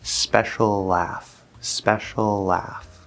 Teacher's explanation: We make a slightly longer L. We hold it for just a little bit longer.